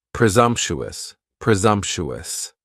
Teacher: Next is presumptuous, and presumptuous has 4 syllables, and the stress is on that second syllable, and the S almost sounds a little more like a Z